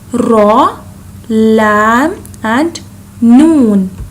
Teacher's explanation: We can read them by touching the front part of our tongue to the roots of the upper teeth. These 3 have the same pronunciation.